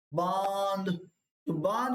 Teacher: ब के साथ यानी कि चंद्रबिंदु भी साथ में ही बोला जाएगा नाक की सहायता से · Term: अनुनासिक